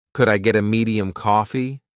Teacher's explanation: linking get a almost smoothly